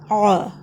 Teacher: ادا کرتے ہوئے گلے کے درمیان کا حصہ پریس ہوگا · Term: عین